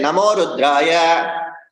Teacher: Instead if I say namo rudraya there is no break, there is no pause. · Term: agama